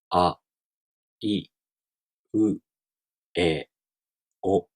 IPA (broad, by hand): a, i, ɯ, e, o